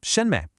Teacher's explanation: A neutral tone means the syllable is unstressed. It's short. It's light. It basically just latches on to the syllable that came before it. So you don't pronounce it as two separate words like shenme.